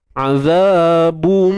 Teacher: Bunyi ba tanwin tu bum terus masuk pada mim tu. Jadi sebab tu pada mim tu ada sabdu. · Idgham bi gunnah kamil. Okey, idgham masuk. Masukkan tanwin ke dalam mim.